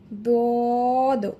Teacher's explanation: জিহবার গোড়ার কিনারা উপরে মারিদ দাঁতের গোড়ার সাথে লাগাইয়া দদ। উপরের, কিন্তু উপরের মারিদ দাঁত আপনি ডানেও করতে পারেন, বামেও করতে পারেন, আপনার যেদিক থেকে সুবিধা হবে।